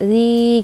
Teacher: Kenapa mad tabi'i? Karena kasroh bertemu dengan ya sukun, panjangnya 2 harokat